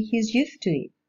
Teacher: We can see how the voiced alveolar sounds changed into voiceless alveolar ones.